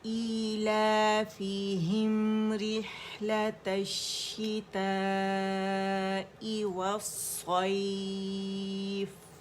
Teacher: مد متصل واجب بن رہی ہے, تو 4 to 5 کاؤنٹ سے ہم کھینچیں گے. اور حمزہ قطع جو اپنے سے پہلے آواز کو کاٹتا ہے, ای کی آواز کلیئر کریں گے.